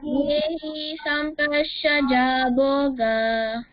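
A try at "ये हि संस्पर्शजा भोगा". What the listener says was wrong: Not ya, it's ye. Yehi sampashaja bhoga.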